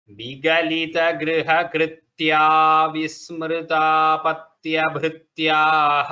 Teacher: when we tell it together, the visarga lopa happens.